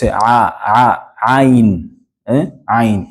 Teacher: Ayn comes from the middle of your throat.